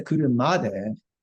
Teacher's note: stress on the ma, and back down on the de